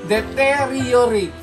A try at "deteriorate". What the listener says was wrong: Galing mo sa!